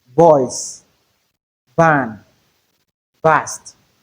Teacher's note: We have the same manner of articulation, the same organs of articulations are involved, but the difference is the phonation process. There is vibration when you say v. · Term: voiced form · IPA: /v/